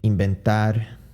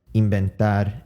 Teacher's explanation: There's a V there, but I pronounce it as you would basically pronounce the English B.